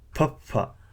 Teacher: so an aspirated P sound